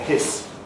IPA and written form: hɪs (hiss)